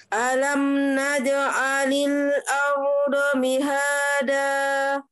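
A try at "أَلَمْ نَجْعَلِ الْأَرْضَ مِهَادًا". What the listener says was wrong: Tengah lidahnya tempelin di langit-langit tengah Umi. Kurang tekan. Naj'.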